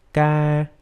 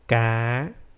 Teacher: A word without tone, ca, and a word with the rising tone, ca. You have to raise the voice from the sol note to the do note to make the rising tone.